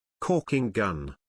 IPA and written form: ˈkɔː.kɪŋ ˌɡʌn (Caulking Gun)